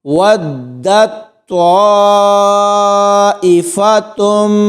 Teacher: واو کو دال کے ساتھ ملائیں گے تو یہاں پر جھٹکا دے کے پڑھیں گے، اور طوا کے آگے مد ہے تو اس کو 3 سے 4 الف کی مقدار تک کھینچ کر پڑھا جائے گا۔